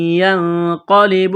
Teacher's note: حروف اخفا ہے، غنہ کریں گے، آواز ناک میں چھپائیں گے ، قاف کو موٹا کرنا ہے، یہاں یا کو نہیں پڑھیں